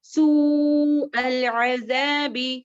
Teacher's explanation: اس کو 4 سے 5 6 حرکات تک کھینچ کر لمبا کر سکتے ہیں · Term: متصل